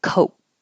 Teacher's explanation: you won't hear that final K Coke unless there's a vowel after it